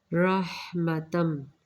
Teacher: ہا کو نرمی کے ساتھ، را کو پر، یہاں پہ میم مشدد ما غنہ ادغام کیا جا رہا ہے، مین نون سیم اس کی طرح اظہار کیا جائے گا۔